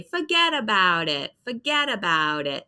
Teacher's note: So we see that D sound instead of T.